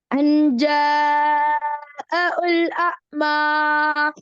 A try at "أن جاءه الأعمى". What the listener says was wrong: நீட்டுறது போதாது. ஜீம நீட்டணுமே எத்தனை செகண்ட் நீட்டணும்? மத்தபதிக்கு திக்காரி மத்துண்டா என்ன? என்ன கருத்து மத்துண்டா? மத்துண்டா என்ன? நீட்டுதல்.